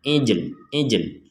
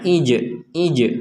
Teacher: kita mengartikulasikan huruf lam tetapi tidak bersuara